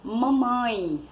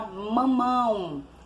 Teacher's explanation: a palavra mamãe a palavra mamão e tem um ditongo mas é um ditongo nasal